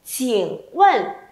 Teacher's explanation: tiếp theo âm chi mình bật hơi nhá.